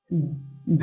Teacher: मूर्धन अल्प प्राण व्यंजन है। डा जो है मूर्धन और अल्प प्राण व्यंजन है